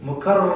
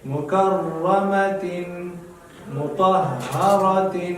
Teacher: را باندې به زور کوئ خو چې د دې را نه ډېرې راګانې جوړې نه شي